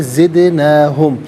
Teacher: دال ساکن ہے لیکن حرف قلقلہ ہے تو آواز لوٹتی بھی محسوس ہونی چاہیے. نون کھڑا زبر نا اور نون الف زبر نا دونوں طریقوں سے پڑھنا درست ہے.